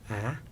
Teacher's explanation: open the mouth a little bit more and at the front we've got the tongue at the front and lips of course spread ah draw open ah then it relaxes slightly but the jaw